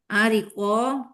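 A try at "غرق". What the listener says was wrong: Ini rin Bu, bukan ain.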